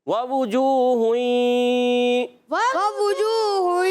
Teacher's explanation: پر زبر ہے، پہلے واو پر، دوسرے پر پیش ہے، مگر ہونٹ گول رہیں گے کیونکہ واو ہونٹوں کی گولائی سے ادا ہوتا ہے ، تو اس پر بھی ہونٹ گول رہیں گے۔ جیم واو